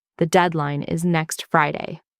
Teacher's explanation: voice goes down, not up. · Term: downward inflection